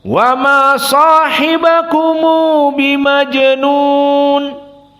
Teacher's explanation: mim dijadikan damah kemudian diberikan waktu dua harakat dan ditambah dengan huruf yang setelahnya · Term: silatul mim